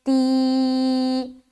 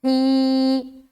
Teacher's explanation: کھڑی زیر کو ایک الف کی مقدار کے باقدر کھینچ کر پڑھیں گے